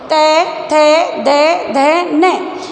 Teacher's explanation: पांचों जो व्यंजन हैं वो दंते में आते हैं, तो इनका उच्चारण स्थान दंते हैं